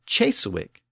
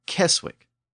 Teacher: influence it would have probably evolved into Cheswick or cheswich but within Old Norse that initial C Sound didn't shift to the English CH sound it retained its original Germanic k sound so Cheswick became Keswick in a similar manner